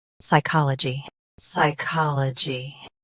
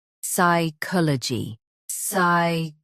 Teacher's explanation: US uses ka, UK uses ko. Watch that middle sound.